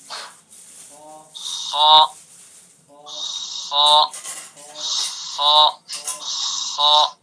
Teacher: خا ادنائے حلق یعنی حلق کا منہ کی طرف والا حصہ · خا کو پر بھی کریں گے اور منہ کی طرف سے اس کو نکالیں گے